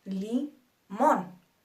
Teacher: nuestra última sílaba es mon y es la más fuerte Li mon por lo tanto se considera una palabra aguda la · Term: sílaba tónica